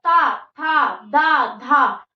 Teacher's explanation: ता जो है वो दांतों में लगेगा